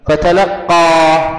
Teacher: قلقل على القاف ومد على الألف الأخيرة